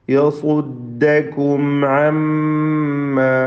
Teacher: യസുദ്ദ സ്വാദിന് തഫ്ഖീം കൊടുക്കണം. എന്നാൽ ആ തഫ്ഖീം ദാലിലേക്ക് വരുന്നത് സൂക്ഷിക്കേണ്ടതാണ്. യസുദ്ദ, ദാല് തർക്കീഖാണ്, ഇസ്തിഫാലിൻ്റെ അക്ഷരമാണ്.